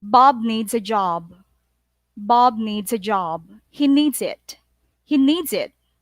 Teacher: So I intonate Bob and job and needs